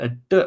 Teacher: The t sound for South Indians often becomes a d sound, a d, where they hit the top of the mouth with the tongue.